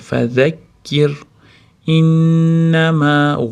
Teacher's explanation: Tashdidli nun kelganda g'unnasini beramiz. Ushlab turamiz. G'unna bo'ladi.